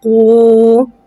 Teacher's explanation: واو ساکن سے پہلے پیش آ رہا ہے، واو مدہ ہو رہا ہے، لہذا واو مدہ کو ایک الف یعنی 2 حرکات کے برابر کھینچ کے پڑھیں گے۔ واو ساکن سے پہلے پیش کو ہونٹوں کی گولائی کے ساتھ ادا کر کے پڑھیں گے۔ قوف، واو، پیش قو۔